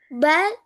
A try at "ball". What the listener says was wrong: Vale, solo la 13, no es ball, porque ahí está haciendo la A, es ball, ball.